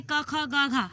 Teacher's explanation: क, ख, ग, घ हमारे कंठ से स्पर्श होकर निकलती है, इसलिए क वर्ण हुआ।